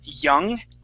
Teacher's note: you had pronounced it with a Spanish Y, saying jung. Okay. The way to not pronounce that Spanish Y is to think of it a Spanish E.